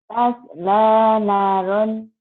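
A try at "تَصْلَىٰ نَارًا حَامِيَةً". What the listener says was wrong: Nanya panjang. Tasla naron hamiyah. Nanya panjang. Tasla naran. Panjang. Tasla naron. Ini ronnya idhar. Ron ya.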